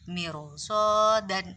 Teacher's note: langsung dibaca dengan ro tebal atau ro tafkhim atau ro yang mulut moncong